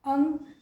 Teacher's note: तो अंग में अनुस्वार नासिका से ध्वनि भी सुनाई दे रही है